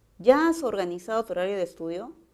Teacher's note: Esa es una pregunta y sé que su tono tiene que ser ascendente para entender la pregunta.